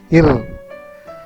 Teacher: It produces a sound ir. Then tip of the tongue touches the middle of the upper palate